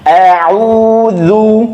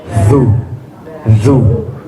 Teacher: Dzal dia ada sifat rokhawah yang artinya ada suara yang mengalir